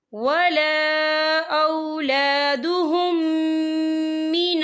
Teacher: اور آگے دیکھیں اولادہم، یہاں میم ساکن ہے، میم ساکن کے بعد جو ہے میم مشرط والا حروف آ رہا ہے، تو یہاں پر ادغام شفوی ہوگا۔ ہم پچھلے میم کو اگلے میم میں مدغم کریں گے اور ہم یہاں غنہ بھی کریں گے۔